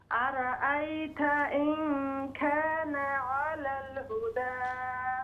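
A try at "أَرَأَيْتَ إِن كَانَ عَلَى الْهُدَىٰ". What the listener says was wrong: खाना नहीं, अरअयत इन कान अलल हुदा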